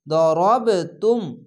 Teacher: কলকলা হবে, ধাক্কা মেরে নিচে সাউন্ড আসবে। দরব তুম, দ জবর দ, রব জবর রব, দরব তাম পেশ তুম, দরব তুম। · এখানে কলকলা হবে ধাক্কা মেরে নিচে সাউন্ড আসবে